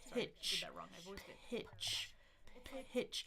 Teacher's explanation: You can feel the air coming out with the P. Watch that short I sound. · >> Notice that last one is also unvoiced. So, I'm turning my vocal folds off and on here.